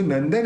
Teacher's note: द बोलते समय अपने दोनों होट मिलते नहीं है तो अपन ने न के ऊपर जो बिंदी है उसका उच्चारण न किया